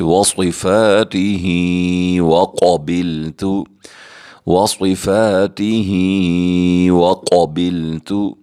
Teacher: نیچے کھڑی زیر ہے، ہم اسے کھینچ کر پڑھیں گے، اور قاف حروف مستعلیہ میں سے آ چکے ہیں، ہم اسے پر کر کے پڑھیں گے اور تا کو بریک پڑھیں گے